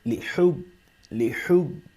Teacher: حا حروف حلقی میں سے ہے لہٰذا اس کو حلق سے ادا کریں گے ، لحب، لحب، اس کو حب نہیں کریں گے پڑھیں گے